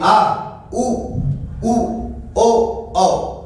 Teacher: पश्च स्वर की बात करें। जितने भी स्वर आप बोलोगे ना पश्च स्वर को, वो बोलने पे ऐसा लगेगा जी पीछे है।